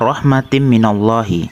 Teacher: minallahi hukum bacaannya rohmatin Idgham Bighunnah sebab kasrotain bertemu huruf mim cara membacanya suara tanwin dimasukkan ke suara mim dengan dengung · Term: idgham bigunah